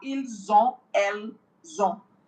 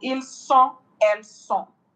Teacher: consonant S is liaising with the O of the vowel to give it that Z sound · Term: liaison